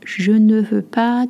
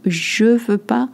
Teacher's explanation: when French speak, they tend to drop the ne, but they always keep the pas